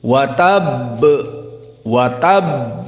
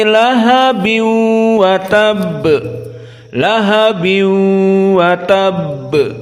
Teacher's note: Ba di saat disukunkan dalam keadaan Qalqalah alkubro